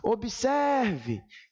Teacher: na palavra observe a sílaba mais forte é a penúltima